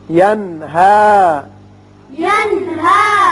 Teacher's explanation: نون ساکن کے بعد ہا ہے جو کہ حروف حلقی میں سے ہے، لہذا یہاں اظہار حلقی ہوگا